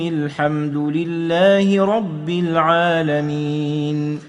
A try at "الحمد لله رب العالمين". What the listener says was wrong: الحمد لله رب العالمين. تخلي بالك من رب ديت، ما تقولش رب العالمين. رب ما تسكنش الباء، لازم الباء مكسورة، فتخلي بالك منها مشددة ومكسورة. الحمد لله رب العالمين.